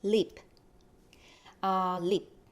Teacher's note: When you pronounce lip, lip, it's not going to be lip, it's lip. So it's unreleased, which means the air does not come out from your mouth.